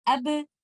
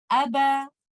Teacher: Unless I separate my two lips, I cannot give letter ba with qalqalah. So qalqalah letters are similar to the vowel letters as there is parting of the two components of the makhraj.